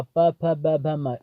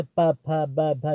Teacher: तो आपको बता दें कि प वर्ग का प, फ, ब, भ, म, अगर जैसे ये सब जो वर्ड होते हैं इनका उच्चारण करते समय ओठ ओठ दोनों ओठ जो होते हैं दोस्तों आपस में टकराते हैं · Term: ओष्ठ